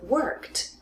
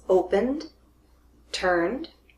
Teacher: when you have a voiceless voiceless consonant it's gonna sound like T but when it's voiced it will sound like a D